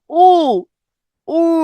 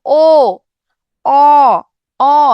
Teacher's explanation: আবার পশ্চাৎ স্বরধ্বনি, যেখানে জিহ্বাটা একটু পিছনের দিকে থাকবে।